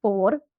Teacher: I can't say four. We don't say the R sound.